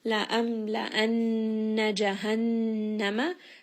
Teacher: So a lot of ghunna, bringing this up into the nose.